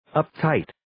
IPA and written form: əp'taɪt (Uptight)